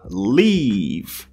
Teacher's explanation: Donc, sur ces deux voyelles qui se prononcent I, on va prolonger le son